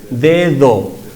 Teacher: En la segunda D, que está entre 2 vocales, la lengua está entre los dientes y deja escapar el aire. En la primera hay una oclusión, el aire está atrapado ante la vocal, de, y después de, do.